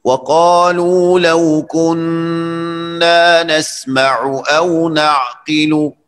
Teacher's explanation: نسمع او نسمع، عین حلقی ہے، ہم نے کل اس پر بات کی ہے، اور او میں حمزہ یہ بھی حلقی ہے، تو ان دونوں کو حلق سے ادا کرے اور اس میں تسہیل کرنے کی مطلب غلطی مت کرے.